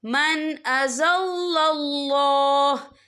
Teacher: या देखिए मन, यहाँ नून साकिन है, नून साकिन के बाद जो है हमजा आ रहा है, हमजा जो है रूफ़े हल्की का वर्ड है, तो हम यह इजहार करेंगे, हम इसे बिना गुन्ने के पढ़ेंगे।